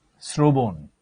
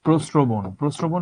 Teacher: যখন রফলা বসে তখন আমরা স এই উচ্চারণ পাই, হিসিং সাউন্ড